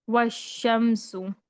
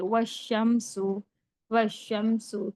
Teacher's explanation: अलिफ लाम दोनों को भी नहीं पढ़ा जाएगा, वाव को डायरेक्ट शीन के साथ मिलाकर पढ़ेंगे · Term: हुरूफ शमसी